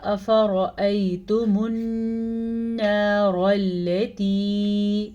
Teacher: را کو پر پڑھنا ہے کیونکہ را پہ زبر ہے